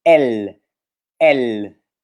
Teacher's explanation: E ele se pronuncia como é, como o E aberto, é.